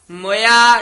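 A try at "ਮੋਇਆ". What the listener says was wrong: मोया नहीं कहना, मम्मी औंकड़ नाल मोया छेती बोलना है। मोया इथे यमक ला देनी है।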